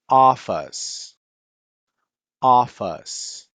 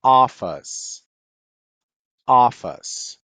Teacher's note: Então, esse Ozinho vai ter um acentinho aqui, né, esse acento agudo. E esse I no inglês a gente precisa falar, mas ele é um schwa, esse é de ponta cabeça.